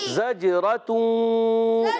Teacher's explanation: زجرا کیا زجرتون. جیم ساکن ہے حروف قلقلہ میں سے تو قلقلہ ہوگا، آواز لوٹ کر آئے گی